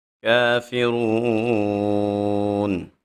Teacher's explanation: جب را کے اوپر پیش آ جائے، را کو موٹا پڑھا جاتا ہے۔ جب واو ساکن ہو اور اس سے پہلے حرف کے اوپر پیش آ جائے، واو مدہ ہوتی ہے۔ واو مدہ کو 1 الف کے برابر لمبا کیا جاتا ہے۔ اب ہم الکافرون کے اوپر وقف کر رہے ہیں تو حالت وقف میں ہم یہاں پہ 3 الف کے برابر مد کر کے پڑھیں گے۔ · کافرون، کاف کے اوپر کھڑا زبر ہے تو ہم یہاں پہ 1 الف کے برابر اس کو لمبا کریں گے۔ جب را کے اوپر پیش آ جائے، را کو موٹا پڑھا جاتا ہے